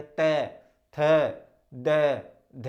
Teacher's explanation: और जब हम इनको बोलेंगे तो क्या होता है? हमारी जो जिह्वा होती है वो दांतों से टकरा कर ही इन वर्णों की ध्वनि क्या करती है, निकालती है। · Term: दंत्य